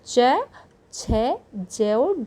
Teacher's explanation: जिन व्यंजनों के उच्चारण में स्पर्श का समय अपेक्षाकृत अधिक होता है, अर्थात जो स्पर्श होता है वो अधिक समय तक होता है और उच्चारण के बाद वाला भाग संघर्षी हो जाता है, यानी उच्चारण होने के बाद का जो भाग है वह संघर्षी हो जाता है, और जो स्पर्श का समय होता है वो जो लगभग ध्वनियों में लगता है उससे कहीं अधिक लगता है, उन्हें स्पर्श संघर्षी कहते हैं।